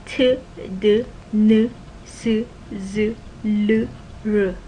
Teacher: These are sounds that are made when you stick the tip of your tongue touches the back of your upper teeth, alveolar ridge area